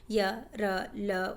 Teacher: अंतःस्थ व्यंजन मध्य में, जो जीभ के जो मध्य में आते हैं। जिन व्यंजनों को बोलते समय जीभ मुख के विभिन्न भागों को पूरी तरह से स्पर्श नहीं करती उन्हें अंतःस्थ व्यंजन कहते हैं।